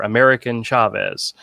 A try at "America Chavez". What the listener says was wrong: I believe you mean America Chavez. You said American. Twice.